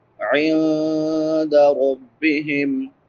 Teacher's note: عین وسط حلق سے ادا ہوتی ہے، حلق کے درمیان سے